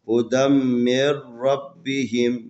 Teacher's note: را کے اوپر زبر ہے لذا را کو موٹا کر کے پڑھیں گے